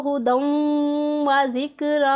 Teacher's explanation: वाव की आवाज़ पे ज़्यादा ज़ोर देना है। दाल की आवाज़ वाव में मिक्स हो जाती है, मिल जाती है, इसे ही इदगाम कहते हैं।